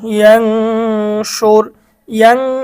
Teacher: নুন সাকিনের পরে শিন আসছে, এটা হচ্ছে ইকফার গুন্না, গুন্না সহ স্পষ্ট করে পড়তে হবে।